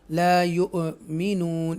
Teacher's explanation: جھٹکے سے ٹوئچ کر کے ہم پڑھیں گے حمزہ ساکنہ کو